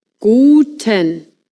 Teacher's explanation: in German, the U is pronounced U. A bit like in boot, but shorter.